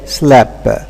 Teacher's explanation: Now, in a number of dialects, final pt or pt and kt here, okay, clusters are simplified by dropping the t. So instead of saying slapped, it's easier to say slap.